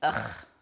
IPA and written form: əx (Ugh)